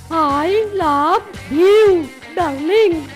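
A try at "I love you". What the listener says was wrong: হয়নি গো। ভিউ বলো না। ইউ বলো।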